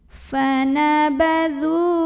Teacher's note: Karena ada waw sukun yang didahului baris dhammah, maka cara bacanya dzal yang berbaris dhammah kita panjangkan sepanjang 2 harokat saja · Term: mad tabi'i